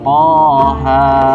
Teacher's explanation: Toha dengan panjang huruf To 2 harokat dan Ha 2 harokat, dan tidak ada qalqalah di situ. Jadi kalau kita baca To Ha maka salah, karena Toha dia bukan huruf-huruf berqalqalah.